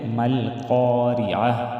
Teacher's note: تا پیش تو مل قارعۃ وقف کی صورت میں مل قارعہ اور قاف کو موٹا ادا کریں گے را کو باریک ادا کریں گے